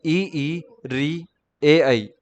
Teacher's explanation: अग्र स्वर वे स्वर जिनके उच्चारण में जिह्वा का अगला भाग सक्रिय, मतलब ये वाला भाग आगे आगे का भाग सक्रिय रहता है, अग्र स्वर कहलाते हैं।